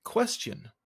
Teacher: It ends with question. It has a feminine ending, an extra weak syllable at the end.